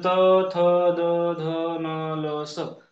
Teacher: त थ द ध न ल स दंत दातावरती यांचा उच्चार असतो